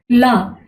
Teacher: ला बोल कर देखिए, ला तो जीभ के पिछले हिस्से से बोला जा रहा है, तो इसलिए इसका नाम पड़ा पार्श्विक व्यंजन।